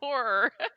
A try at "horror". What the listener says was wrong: You gotta pronounce that R. Horror.